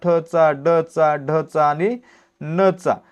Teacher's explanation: यांचा उच्चार करताना आपली जीभ काय करते आपल्या मूर्धला स्पर्श करते म्हणून हे काय आहेत मूर्धन्य वर्ण आहेत